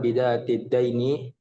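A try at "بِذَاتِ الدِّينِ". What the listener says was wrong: Din, bukan dain, din.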